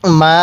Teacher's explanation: এই মিমের মধ্যে এক আলিফ টান দিব খারা জবরের কারণে